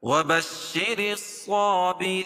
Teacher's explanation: را کے نیچے زیر ہے تو را باریک پڑھی جائے گی